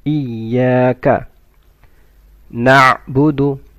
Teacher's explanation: You stretch the ya for one second.